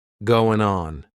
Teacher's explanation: we're going to drop that G at the end of the word going